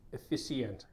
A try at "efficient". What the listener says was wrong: So আমরা এটাকে efficient pronounce করি. Again, same problem. It should be pronounced as Efficient. Stress should be on the second syllable. Efficient.